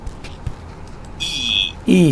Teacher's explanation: And the third one is the rounded unrounded distinction. And if you pronounce this one, E sound, the lips remain unrounded, so therefore it is unrounded. In the description, we would say that it is high, front, unrounded vowel.